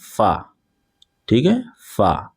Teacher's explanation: دانت کو دانت آپ کے جو اوپر والے ہیں وہ نیچے والے ہونٹ سے ملانا ہے